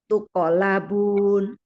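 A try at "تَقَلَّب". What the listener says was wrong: qofnya lebih sidah, Bu. Qofnya lebih sidah. Tuqolabun. Tuqolabun.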